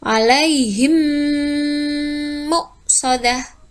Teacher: Dibacanya langsung dimasukkan dan didengungkan. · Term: idgham mimi